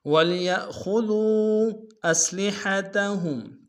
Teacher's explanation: ولیأخذوا میں یا کو حمزہ کے سامنے لیں گے جھٹکا دیں گے، خا کو موٹا ادا کریں گے ، دال کو واو کے سامنے لیں گے، واو مدہ ہے